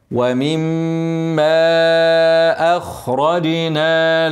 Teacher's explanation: ومما بعدها حرف مد وبعد كده همزه مد منفصل تاني هنمد ايه توسط اربع حركات · ومما ميم مشدده هنغنى حركتين